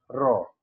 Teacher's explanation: সেটা হলো একটি মাত্র ধ্বনি, সেটা হলো র। র আমরা র বর্ণটি উচ্চারণ করার সময় অবশ্যই মুখের জিহ্বার মধ্যে একটা কম্পনের সৃষ্টি হয়, যেমন র। তাহলে সেটাকে আমরা কম্পন ধ্বনি বলতে পারি।